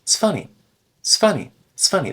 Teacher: When you begin a sentence with the word it's, I sometimes notice that people completely drop the I part, and they just begin with, it's funny